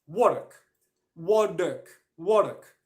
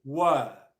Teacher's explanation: There is no R sound in any word when the next sound is a consonant